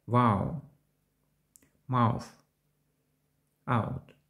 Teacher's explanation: Дифтонг подібний до звуку сполучення «ау». Вимова починається з голосного звуку «а», що переходить у голосний «у». Останній не вимовляється чітко. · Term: Звук «ау»